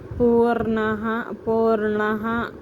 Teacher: విసర్గ వచ్చేటప్పుడు ఎప్పుడన్నా సరే పూర్ణః పూర్ణః హ కిందే చదవాలండి. అర్థమైందా అండి మీకు హ అని పూర్తిగా చదవాలి.